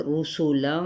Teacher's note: یہ را کی پیش اور سین کی پیش کو ہم لمبا نہیں کریں گے۔